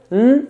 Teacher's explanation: To get that nun sound, to make it clear, the tip of the tongue will touch the roof of the mouth, n, and then let go. So tip of the tongue, roof of the mouth. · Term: nun sakina